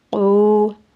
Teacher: حمزہ کو لمبا نہیں کرنا، او، عین واو پیش اس کو لمبا کریں گے۔ اس کا قاعدہ یہ ہے کہ اگر واو ساکن ہو اور اس سے پہلے پیش ہو تو ہم اسے ایک الف کی مقدار کھینچ کے پڑھتے ہیں، یعنی یہاں پہ واو مدہ کی ادائیگی ہوتی ہے۔